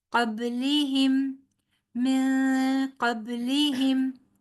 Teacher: با پھر حروف قلقلہ میں سے ہے اور ساکن ہے